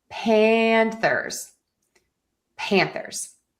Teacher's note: we're going to stress the pan for Panthers